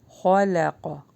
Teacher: خا کو ہیوی پڑھنا ہے، لا لائٹ پڑھا جائے گا اور قاف ہیوی